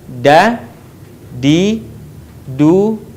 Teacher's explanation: Huruf da keluar dengan cara menyentuhkan ujung lidah kita ke gusi bagian atas sebagaimana kita melafalkan huruf ta.